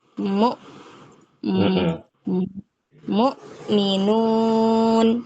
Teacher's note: mu bukan kebawa dengan ain atau tercampur dengan ain